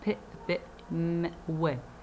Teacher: They are those consonants which are produced between the two lips. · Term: bilabial